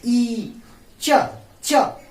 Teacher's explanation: ई, चवर्ग, य और स को क्या कहते हैं, तालव्य भी कहते हैं, क्योंकि यह तालु के मदद से बोला जाता है।